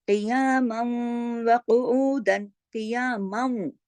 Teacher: यानी कुछ गुन्ना है और कुछ नहीं, नाकिस गुन्ना है